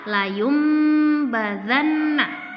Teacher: nun sukun ketemu huruf ba, maka itu bacaan iklab. Nah, biasanya kalau di Al-Qur'an ditandai dengan mim kecil seperti ini ya.